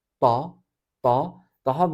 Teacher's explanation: dilin ortasının ağzın tavanına yapıştırılarak havanın orada sıkıştırılması ile çıkartılan bir harf